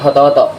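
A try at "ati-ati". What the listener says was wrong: Hati-hati. Enggak semuanya itu diucapin o gitu. Ada bagiannya.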